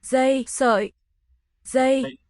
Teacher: A plain letter D is pronounced Z, at least in this dialect.